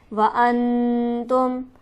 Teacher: انتم میں نون ساکن ہے، اس کے بعد حرف ہلکی موجود نہیں ہے، تو لہٰذا یہاں پر ہم غنہ سے پڑھیں گے